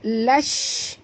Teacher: di sini lash alif lam syamsiah, masukkan bunyi lam terus ke dalam shim